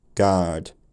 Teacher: I just said the vowel and made it slightly R-coloured at the end.